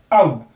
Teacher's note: जीभ जो है हमारी वो पीछे से आगे की तरफ आएगी और ऊपर की तरफ भी जाएगी। औ जब बोलेंगे जीभ नीचे होगी, और ई जब तक हम बोलेंगे तब तक जीभ आगे या पीछे से आगे और नीचे से ऊपर चली जाएगी।